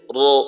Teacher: মোটা করার জন্য জিহ্বার গোড়ার ব্যবহার করতে হয়